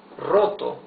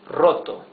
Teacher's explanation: the R at the beginning of a word is the rough R